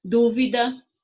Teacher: A sílaba tônica é o du